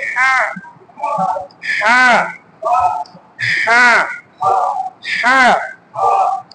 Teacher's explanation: হলকের মধ্যখান থেকে উচ্চারিত হবে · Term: হার উচ্চারণটা